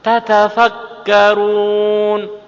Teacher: Tirukan saya, tatafakarun tak berdua, jejer sama-sama fathahnya. Tekanan pada tak pertama dan tak kedua harus sama, tidak boleh dikurangi.